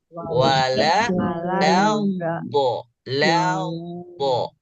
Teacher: Harus ditipiskan huruf lam karena lam huruf tipis.